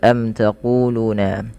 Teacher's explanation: mim mati bertemu dengan ta dibaca dengan jelas Suara mimnya karena dia izhar syafawi kemudian panjang ku dan Lu harus sama karena kedua-duanya Mad thaii